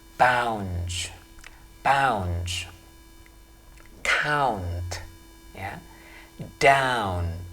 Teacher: bunyi yang seharusnya dibaca sebagai diftong kemudian disederhanakan menjadi seolah-olah tidak berbunyi diftong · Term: diphthong au